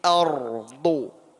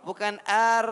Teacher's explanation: Wa akhrajatil ardu ardu. Jadi ro tebal, ro sukun, sebelumnya ada fathah, maka pelafatannya tebal.